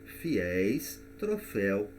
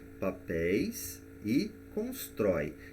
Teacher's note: nós vamos perceber que a sílaba tônica é a última, ou seja, o ditongo aberto está na última sílaba, portanto são palavras oxítonas e vão receber o acento.